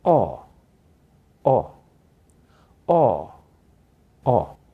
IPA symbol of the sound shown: ɒ